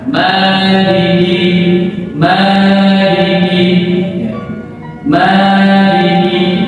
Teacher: Ma itu panjang dua harakat. Dua harakat itu sama dengan kita membaca huruf. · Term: mad asli